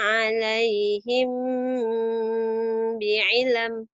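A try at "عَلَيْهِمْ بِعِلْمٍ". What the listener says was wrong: Ditahan 'alaihimnya.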